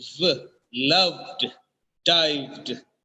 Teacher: There is a friction between the lips while producing the sound for the letter V. It is v. There is a buzzing sound when producing the sound for the letter V.